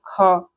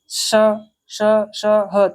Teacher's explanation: अब देखिए संघर्षी व्यंजन होते कौन से हैं, जिनका उच्चारण करते समय जो जीभ है, मतलब जो श्वास वायु है, ठीक है, निकलने के लिए बहुत संकरा मार्ग बन जाए।